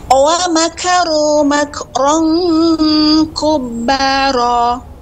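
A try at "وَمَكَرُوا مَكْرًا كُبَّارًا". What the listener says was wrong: Nah, kubbara. Bukan, pada ra-nya lebih tebal. Kubbara. Ra. Nah, demikian.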